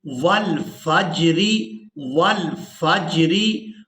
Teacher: واو کو لام ساکن کے ساتھ ملانا ہے. واو لام زبر ول، فا جیم زبر فج، را ری.